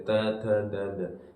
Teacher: ना तो इस दंते के अंदर ये पढ़ते हैं हम कि इनका उच्चारण करते समय हमारी जीवा हमारे दांतों को छूती है